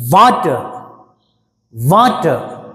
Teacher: వా మీద స్ట్రెస్ వస్తుంది